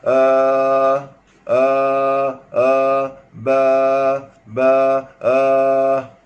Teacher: itu makhrajnya keluar daripada rongga kerengkung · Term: alif mad